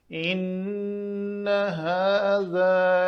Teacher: ان نون کے اوپر شد کی وجہ سے دو حرکت کے برابر ٹائم دے کر اس کو غنہ کرنا اور بعد میں اس غنہ کو حرکت نہ دینا، صرف ایک حرکت پڑھنا، لمبا نہیں کرنا۔